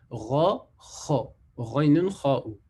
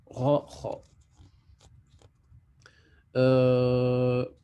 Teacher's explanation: C'est pas au niveau de la langue, c'est pas au fond de la langue, mais au-dessus, au niveau de la gorge, en fait, là où elle va se terminer, presque. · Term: lettres de la gorge